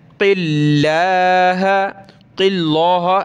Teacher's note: اللہ سے پہلا ورڈ ہے قاف، اس پر زیر ہے تو لفظ اللہ کو ہم نے یہاں پتلا کرنا ہے، باریک پڑھنا ہے